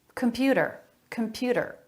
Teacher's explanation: him computer computer they're all saying that with a flap computer a flap instead of a t sound